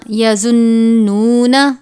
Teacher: نون پہ نون مشدد ہے، سختی سے پڑھیں گے اور غنہ بھی کریں گے